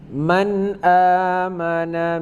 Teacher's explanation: Man amana tidak berdengung. Man amana, dari man langsung ke amana. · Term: idhar